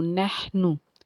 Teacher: हा जो है हर्फ हल्की का हर्फ, हल्के के दरमियान से इसको अदा करना है